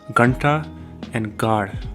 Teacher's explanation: The next letter is ga, ga as in gum, but it's aspirated. This is a velar plosive sound as well.